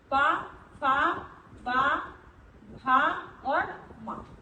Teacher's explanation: तो इन वर्णों का उच्चारण स्थान कहाँ से हो रहा है? होठ से। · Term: ओष्ठ